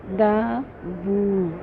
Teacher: یہاں پر دیکھیے اس لفظ میں دا، یہاں پر ہمارے پاس الف مدہ ہے، ٹھیک ہے، الف خالی، دال کے اوپر زبر، دا وو، وو کے الٹا پیش، دونوں کو 2 حرکہ کھینچیں گے